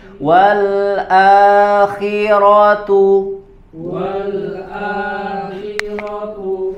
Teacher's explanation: huruf ko berharakat kasrah juga dibaca tipis Wal walakhiratu ya khinya tipis jangan KH khi jangan tebal tapi